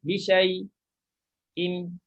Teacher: bila kita nak buat saktah, kita jangan panjangkan syai'. Dia dah jadi macam mat dah.